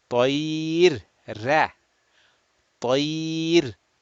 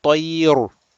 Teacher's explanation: I am going to change the ra. I'm going to make it flat, muraqqaq, flat. And I will stop here by saying tayr, ra, tayr, not tayr.